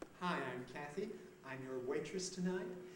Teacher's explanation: a rise each time a high rise as if she's seeking your agreement to this statement